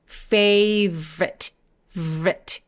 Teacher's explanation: 중간에 O를 없애버리고 V에서 R로 바로 가는 거예요.